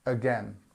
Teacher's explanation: the strength of the word is on the second syllable, and the first part of the word is our famous schwa sound.